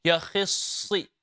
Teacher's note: Okay, and this is a beautiful example where the kha and the sad both are tafkhim letters and they have a kasra underneath, and making sure that even if they have a kasra, the full mouth does not change. It's still full mouth.